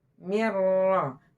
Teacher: Huruf ro ini dia tidak boleh banyak getaran. Hanya 2 kali saja.